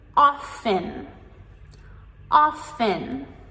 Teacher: we have the T as the silent letter and we just pronounce the off-N.